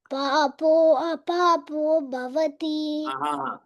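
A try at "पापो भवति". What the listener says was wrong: சொல்ல வேண்டாம் ஆ சொல்ல வேண்டாம் பாப்போ பாப்போ அது மட்டும் சொன்னா போதும்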